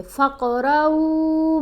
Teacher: قاف کے اوپر کلکلا کریں گے, یعنی آواز کو ہلا کر پڑھیں گے